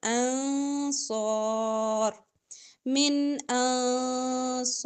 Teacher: نون ساکن کے بعد صاد ہے یہاں پہ اخفا ہوگا